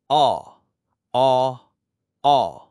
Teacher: এটি বাংলায় অ এবং আ এর মাঝামাঝি একটি উচ্চারণ